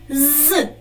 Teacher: він вимовляється в цьому слові твердо і позначається одною рисочкою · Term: приголосний